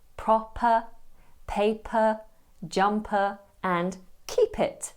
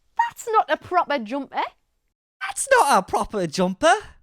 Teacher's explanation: glottalized p will happen when a p is between two vowel sounds for example in the following words and phrases proper paper jumper